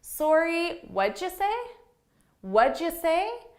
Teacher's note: just to be a little more polite i add that sorry with my rising intonation · I have two rising intonations with sorry and say.